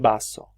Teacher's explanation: una B oclusiva más fuerte, con un contacto completo entre los labios